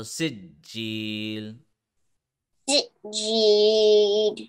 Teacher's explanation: jim has a tashdeed, so we will press the jim for half a second. Then we will stretch the g for 1 second because of the Yae Madda rule.